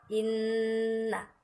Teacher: Inna pasti ada dengung di bagian hidung ya. Jadi tempat keluar dengungnya itu ada di rongga hidung. Coba kalau kita tes ya, kita tes nun tasdid atau mim tasdid.